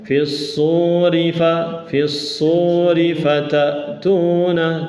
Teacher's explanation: Perhatikan panjang pendeknya. Sunya panjang, rinya pendek.